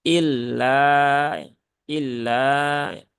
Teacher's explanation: Seringkali tasdidnya ini hilang. Jadi terbaca ila